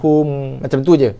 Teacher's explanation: kita izharkan, nyatakan, jelaskan sebutan makhraj mim, berserta kita keluarkan hanya sedikit sahaja bunyi dengung pada makhraj mim. Hum, macam tu je, dengung yang tak sempurna. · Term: izhar syafawi